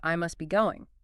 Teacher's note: Formally, you'd hit that T in must, but in fast speech, it often vanishes